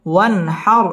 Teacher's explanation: নুন সাকিনের বামে হা আসছে, হা ইজহারের হরফ, গুন্না ছাড়া স্পষ্ট করে পড়তে হবে। ওয়ান হার র পুর হবে এবং রয়ের মধ্যে ওয়াকফ করতে হবে।